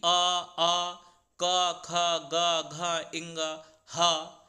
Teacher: जब भी आप इन वर्णों का उच्चारण करते हैं तो प्राय आप देखेंगे कि आप कंठ के द्वारा आप अपने गले के द्वारा ही सामान्यतः इसका उच्चारण कर रहे हैं। जो आपकी वायु आ रही है वो वायु सीधे आपके गले से ही निकलकर इन वर्णों का उच्चारण हो रहा है।